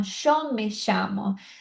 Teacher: Na Argentina, se você vê pessoas que falam chamo, você pode ter certeza que ela vai falar show pro Y também.